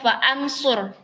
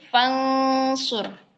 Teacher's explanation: Nah, itu adalah huruf hamzah wasal yang tidak perlu dibaca. Jadi, bacaannya langsung setelah huruf fa itu langsung kita baca ke huruf nun sukun. Jadi, bukan faansur tapi fansur.